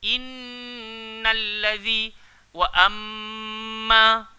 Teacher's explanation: kadar dengung gunnah huruf nun dan mim bersabdu harus dipanjangkan sampai 3 harakat